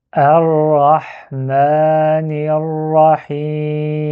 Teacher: Et du coup, on va faire un petit triangle comme ça pour nous dire qu'il faut attention, ne pas prononcer Ra ou La. C'est un R roulé, c'est un Ra.